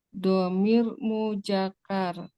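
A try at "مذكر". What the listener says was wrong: Bukan mujakar, muzakkar. Za. Muzakkar.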